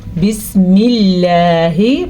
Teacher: اللہ کے نام سے پہلے اگر زیر آ جائے تو اللہ کا نام باریک پڑھا جاتا ہے